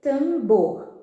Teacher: Última sílaba, palavra oxítona. Tambor, mesma coisa. A última sílaba é a tônica.